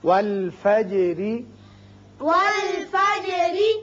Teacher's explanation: جیم پر اس کی صفت قلقلہ ادا کریں، اور جب را کے نیچے زیر پڑیں گے تو را باریک ہوگا آگے ملانے کے لیے.